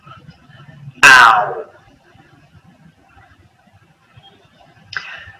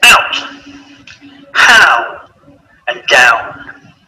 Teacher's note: The next sound is ow. This is a combination of a and or oo. Now our mouth is closing and the shape of the lips is changing at the same time, rounding a little as we say the sound.